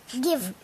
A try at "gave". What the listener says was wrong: Give or gave? This is A. Look at the sounds, please. Gave. Take a good look at each sound. Here, say it slowly if you can.